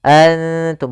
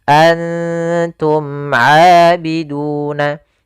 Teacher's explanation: ikhfa itu menyamarkan huruf kepada huruf setelahnya, yaitu nunnya disamarkan kepada huruf ta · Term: ikhfa aqrab